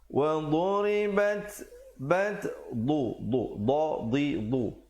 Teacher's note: du di tepi lidah ya. Wa duribat ri jadi nipis, bat ada hamasnya, ada angin di situ.